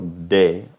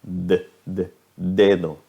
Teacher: consonante de de puedo poner mis dedos en mi garganta y cuando yo digo de puedo sentir la voz resonando en mi garganta